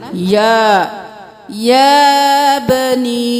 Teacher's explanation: مد ہے 5 انگلیوں کے برابر کھینچیں گے